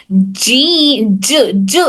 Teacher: इन तीनों में भी दरमियान वाला जो हिस्सा है तो हमारी जबान का दरमियानी हिस्सा ऊपर तालू के दरमियानी हिस्से को टच कर कर हर जीम अदा होता है।